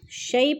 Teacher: شیء پہ یالین ہے، یا ساکن سے پہلے شین کے اوپر زبر ہے تو یالین کو لمبا بھی نہیں کرنا اور جھٹکا بھی نہیں دینا